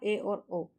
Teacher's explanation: अर्धसंवृत स्वर के उच्चारण में मुख्य द्वार कम खुला होता है